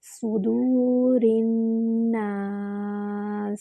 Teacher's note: سین میں سیٹی کی آواز آئے گی